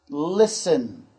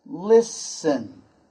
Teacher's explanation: Now, in this particular word, the T is silent. Silent. That means we don't hear that sound in this word.